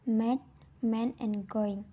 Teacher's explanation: Nasal consonants are corrected when you completely block airflow through your mouth and let the air pass through your nose